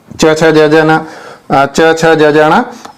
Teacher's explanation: च वर्ण जो होता है वो तालु पर आधारित होता है